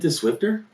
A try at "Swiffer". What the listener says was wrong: Swiffer. Swiffer. There's no T in it. There's T. No, man. It cleans just as good without the T.